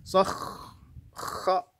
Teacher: Kha huruf tebal, kemudian dia punya sifat rakhawah, mengalir bunyinya.